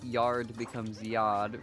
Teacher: I drop the R's in my words.